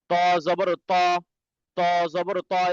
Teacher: জিহ্বার আগা সামনে দুই দাঁতের ভিতরের দিকে গোড়ার সঙ্গে লাগবে